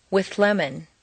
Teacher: see how the TH moves back and the L moves forward to meet in a new middle position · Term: composite sound